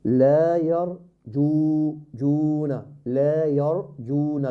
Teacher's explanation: the ra is مفخم as well